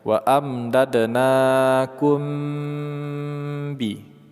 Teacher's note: Na kita panjangkan 2 harokat. Mim mati bertemu dengan ba, ikhfa syafawi. Kita baca secara ditahan ya, dan didengungkan.